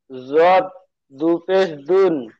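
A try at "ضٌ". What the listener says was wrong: দুন হবে না, দাল দুপেশ দুন হয়। জদ দুপেশ জুন।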